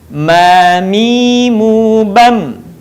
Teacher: Selanjutnya adalah huruf mim. Huruf mim atau ma dikeluarkan dengan cara merapatkan bibir kita.